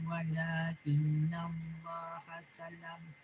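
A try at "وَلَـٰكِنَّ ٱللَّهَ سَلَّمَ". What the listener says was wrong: Betul yang tu ada sabdu walakinallahu sallam. Sallam dia ada sabdu.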